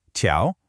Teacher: But ciao is a second tone, which means it rises. It should sound almost like you're asking a question. · So you have to avoid that flat min tiao. The correct way has this really dynamic movement. A sharp fall, followed by a clear rise.